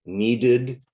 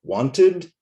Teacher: the special ud sound, right, after t or d. And the E is not silent there, so it adds 1 more syllable